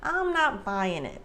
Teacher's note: the G at the end of buying is typically not pronounced like Americans reduce the G at the end a lot sometimes